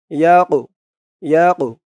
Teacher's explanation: এই কফটা কলকলার হরফ ধাক্কা দিয়ে পড়তে হবে